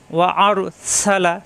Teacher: রয় সাকিন র মোটা